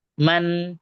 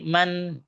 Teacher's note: harus ada dengung di rongga hidung